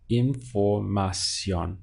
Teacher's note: And that is why in the written language, you'll see the accent over the O, because it's telling you now that this word breaks the rules. It's not the default setting, and you stress the last syllable, the ending. So we have información.